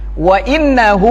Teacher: hunya panjang, mad silah qasirah